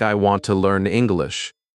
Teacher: the important words are want, learn, and English. These words carry the message. The other words are softer, quicker, lighter. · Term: stress